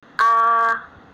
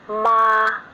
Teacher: the first one is high and flat one